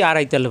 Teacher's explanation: আড়াইতাল্লা যদি পড়ি তাহলে এই হামজাটা পুরোপুরি বাদ হয়ে যায়। আর বাদ হয়ে গেলে অর্থের পরিবর্তন হয়ে যাবে।